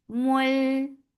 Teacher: idgham without gunna. So you are not keeping the sound in your nose at all.